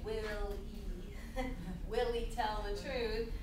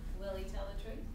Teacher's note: So when you hear that, Willie, what's happening is that we have will, he, but of course the H disappears, and you hear Willie.